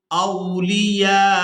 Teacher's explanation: یہاں نون ساکن پر اخفا کریں گے، یعنی نون کی آواز کو ناک میں چھپا کر ادا کریں گے، من دونی اولیاء کو الف مدہ اور مد کی وجہ سے کھینچتے ہوئے حمزہ ساکن کے ساتھ ملائیں گے